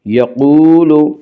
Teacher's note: یقول، وا مدہ، وا مدہ وہ واو جو ساکن ہو اور اس سے پہلے پیش ہو، وا مدہ کو 1 الف کے برابر کھینچ کر پڑھیں گے۔ یقول انہا، نون مشدد غنہ ہوگا، غنہ کی مقدار 1 الف ہے۔ انہا، الف مدہ، الف ہمیشہ مدہ ہوتا ہے، الف سے پہلے ہمیشہ زبر ہوتا ہے، الف مدہ کو 1 الف کے برابر کھینچ کر پڑھیں گے۔